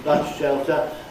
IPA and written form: ˋbʌs ʃeltə (bus-shelter)